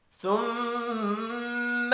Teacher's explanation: ثم میم مشدد پر غنہ کریں گے۔